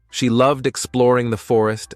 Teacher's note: notice how we emphasize the word loved at the beginning of the sentence. This helps us give more meaning to the action Lily is doing.